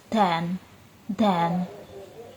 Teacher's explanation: voiced alveolar plosive, made by the tongue touching the ridge behind the teeth